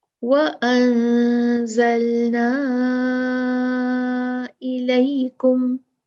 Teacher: زلنا، زلا نہیں ہے، لام پہ فتحہ نہیں ہے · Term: ساکن